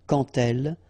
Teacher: when you will have this D, you will phonetically pronounce it like T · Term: liaison